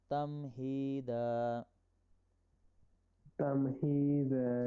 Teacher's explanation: ہی یا مدہ ہے اس لیے اس کو لمبا کر کے پڑھیں گے. دا الف مدہ ہے اس لیے لمبا کیا گیا.